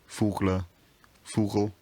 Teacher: the word final vowel weakens and disappears